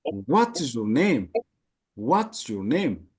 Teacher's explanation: ጅምር ላይ በራይዚንግ ኢንቶኔሽን ነው የሚጀምረው።